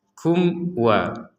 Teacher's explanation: Di sini ada mim sukun bertemu wawu. Maka kita membacanya dengan jelas. Kum wa. Jadi jangan ada samar.